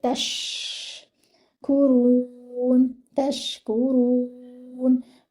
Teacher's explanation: Your ta should join with the sheen. The sheen should have that spreading sound in it.